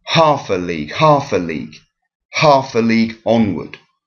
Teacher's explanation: the first syllable is stressed and then there are two unstressed so we have strong weak weak so half a league half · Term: dactil